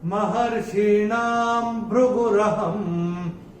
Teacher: पहले चरण में ना के ऊपर अनुस्वार के बाद का अक्षर है भ, और अनुस्वार के बाद जब भ आएगा तो अनुस्वार का उच्चारण होगा म